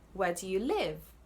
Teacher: So you've emphasized the word live. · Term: sentence stress